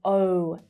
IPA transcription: əʊ